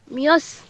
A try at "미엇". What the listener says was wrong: এখানে তো মিয়স হবে না, ছিয়ত যদি ভাচ্চিম হিসাবে বসে, ছিয়তের উচ্চারণ কি হবে? ত, তর মতো হবে, তাহলে কি হবে? মিয়ত।